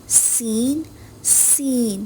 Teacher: زبان کا سرا جب نیچے والے دانتوں کے اندرونی حصے سے ٹکراتا ہے تو سین ادا ہوتا ہے. اور ہاں یاد رہے اوپر نیچے کے دانت بھی ملنے چاہیے تبھی سیٹی والی آواز بنے گی.